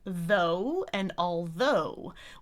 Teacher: then we have /oʊ/, but it's actually two vowels